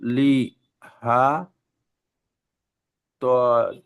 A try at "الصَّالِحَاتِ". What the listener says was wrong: খাড়া যাবার একটু টান দিতে হবে।